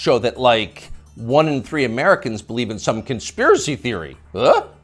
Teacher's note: the upspeak, the rising inflection at the end of the sentence.